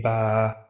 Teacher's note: You can see that will give us a ba, but when alif has been added at the end of such kind of a vibration, that means just before the alif, if we have a fatha, that will stretch the sound of that ba